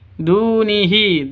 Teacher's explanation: Du panjang dua ketukan karena ada wawu mati diawali dengan dhammah. Mad asli atau mad tabi'i.